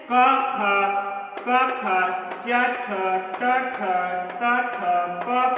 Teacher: जिन व्यंजनों का उच्चारण करते समय हमारे स्वर इंद्रियों में कंपन नहीं होता है या ना होता है, तो उसको हम क्या बोलते हैं? आघोष कहते हैं।